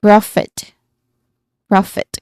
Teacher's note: It has a short O sound as in hot or dog. So you should be careful not to make it too long. · the primary stress is on the first syllable just like in profit.